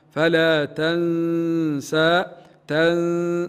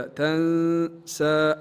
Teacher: النون خاليه من الحركه في المصحف حكمها الاخفاء مع الغنه